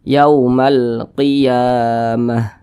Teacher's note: panjang ini huruf ya di atasnya ada tanda baca fathah berdiri maka huruf ya dibaca panjang ini namanya adalah Mad thi'i panjangnya dua harakat